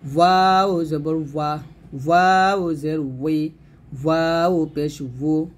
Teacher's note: ওয়াও দুই ঠোঁট গোল করে ঠোঁট থেকে নিয়ে আসতে হবে।